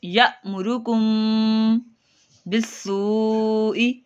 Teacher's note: میم ساکن کے بعد بار ہے، یہاں پہ گنہ کریں گے اور حمزہ ساکنہ کو جھٹکا دے کے پڑھیں گے